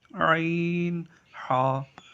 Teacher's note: حلق کا جو نچلا حصہ ہے، حمزہ، ہا نیچے سے۔ عین، ہا حلق کے درمیان والے حصے سے ادا ہوتے ہیں۔